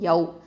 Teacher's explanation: இந்த வாவ் வந்து வாவ் சுக்குன் பெற்றதுக்கு முன்னாடி உள்ள எழுத்தில் ஃபதா இருக்கிறதுனால இது என்ன? லீன், வாவுல் லீன்.